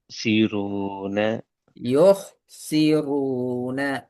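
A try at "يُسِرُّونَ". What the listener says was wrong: இந்த ஹார்ட சவுண்ட் வருது இல்ல. யோ யோ.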